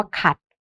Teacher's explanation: เสียงสั้นนะคะอย่างเช่นคำว่าขัดนะคะนี้ก็เป็นเสียงเอก